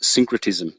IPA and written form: ˈsɪŋkrətɪzəm (Syncretism)